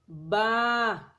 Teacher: با کو بند ہونٹوں کے گیلے حصے سے ادا کرنا پڑتا ہے